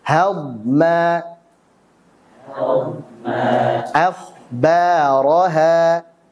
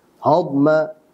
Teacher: Ha harusnya tipis. Jangan sampai karena setelahnya tebal, maka jangan sampai dia tebal.